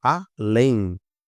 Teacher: A última sílaba é mais forte